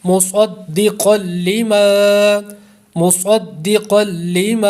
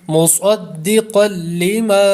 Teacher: صاد اور قاف دو حروف مستعلیہ ہیں، اس لیے دونوں کو پر کریں گے